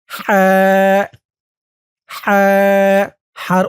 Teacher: উচ্চারণ গলার ভেতর থেকে চিকুন হয়ে বের হবে